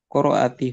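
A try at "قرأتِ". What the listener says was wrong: Hamzahnya mati sukun. Qara Mati hamzahnya. Qara, qara, zahab, raja, fata.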